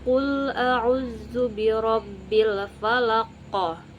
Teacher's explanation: Kemudian huruf tersebut bisa berharakat sukun atau mati karena diwakafkan dan dibaca dengan pantulan yang kuat dan jelas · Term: qalqalah kubra